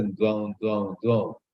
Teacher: So, suppose you have some cold, your voice becomes a little nasal. Instead of saying do, you say dwang. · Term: nasal sound